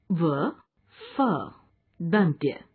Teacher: इन वर्णों का उच्चारण ऊपर के दांत और नीचे के होंठ से होता है